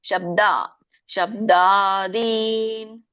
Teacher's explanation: ಶಬ್ದ ಅಂತ ಹೇಳಬೇಡಿ ತುಂಬಾ ಜನರಿಗೆ ಹಾಗೆ ಬರೋದು ಇಲ್ಲಿ ಅಲ್ಪಪ್ರಾಣ ಇದೆ ಎರಡು ಕೂಡ ಶಬ್ದ ಶಬ್ದಾದಿ ದಿ ಎಳಿಬೇಕು ದೀರ್ಘ ಇದೆ ಶಬ್ದಾದಿನ್ ವಿಷಯಕ್ತ್ವ ಶಬ್ದಾದಿ ವಿಷಯ ಅಲ್ಲಿ